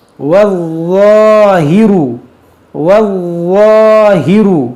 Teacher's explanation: ये ज़ा हुरूफ़ मुस्तालिया है और मुशद्दद है, इसको पढ़ेंगे 2 बार और इसको मोटा भी करेंगे